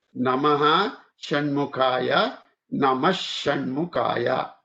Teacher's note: Visarga remains or changes to sh.